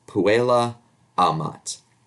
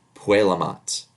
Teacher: When spoken, this sounds like puelamat. The final vowel of puella, the a, elides into the initial vowel of amat. Puelamat. Here's some more.